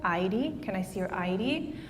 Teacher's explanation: the word ID for example is pronounced on the first syllable